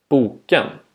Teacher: tone 2 is a falling rising falling tone the pitch falls on the stressed syllable then rises and falls again on the unstressed syllable that follows